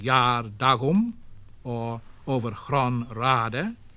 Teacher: clashing rhythm, with the 2 stresses together, flanked by the unstressed syllables